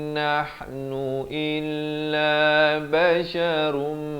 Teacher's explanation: Di sini idgham bi gunnah. Daripada basyarun, ron rin run, tapi jadi basyarum, masuk beserta dengan 2 harakat.